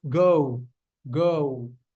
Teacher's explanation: you're making a circle out of your lips at the end.